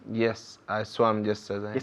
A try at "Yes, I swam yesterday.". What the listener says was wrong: Yes, I swam yesterday. Más abierto. Hay que exagerar, yeah? Yes, I swam yesterday. I swam. Estoy exagerando, ¿no? Swam. Pero es así. Yes, I swam.